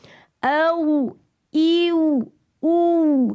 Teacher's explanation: Lepas ni kalau mengaji jumpa je huruf wow, pastikan huruf wow tuan-tuan tu keluar ikut bibir. Dan tuan-tuan kena membulatkan bibir anda, memoncongkan.